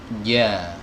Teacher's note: huruf jim keluar dari lidah bagian tengah. Ya, wasatul lisan di sini. Lidah bagian tengah ditempelkan ke langit-langit.